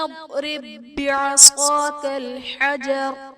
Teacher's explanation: با حرف قلقلہ مشدد ہے تو یہاں پر قلقلہ خوب جماؤ کے ساتھ ادا کریں گے